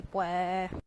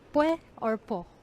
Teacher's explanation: Like they almost never pronounce the S. It's either pue or po.